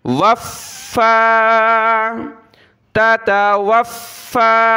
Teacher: واو کو فا کے ساتھ ملایا، فا کو سخت کریں گے تشدید کی وجہ سے، اور کھڑا زبر کی وجہ سے اس کو ایک الف کی مقدار فا کو اوپر کی طرف کھینچنا ہے